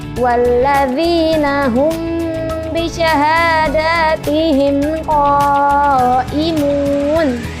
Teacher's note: Kemudian di ayat 33 kalian perhatikan di sini ada huruf mim sukun bertemu ba, di mana hukum bacanya itu dibaca dengung.